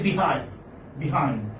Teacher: But although you write double E there, but you do not prolong the sound.